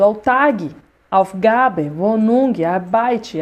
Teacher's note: Aí, pessoal, eu falo, muitas palavras na língua alemã tem o quê? A Betonung, a sílaba tônica no início